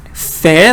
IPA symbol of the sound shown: f